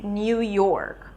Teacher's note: A lot of you might be saying New York. New an N sound and then a Y and then the U as in food. new. But to be honest, you don't have to add that y sound.